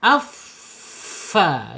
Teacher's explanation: Fa makhrajnya ada di asyafatain, 2 bibir, kaidahnya yaitu ujung seri bagian atas menyentuh perut bibir bagian bawah. Afa ya, itu fa ngalir ya, sifatnya ngalir, hamas